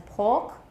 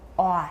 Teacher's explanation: In British, it's O as in pork. In American, it's aw. Aw. 它 根 本 就 是 个 双 母 音.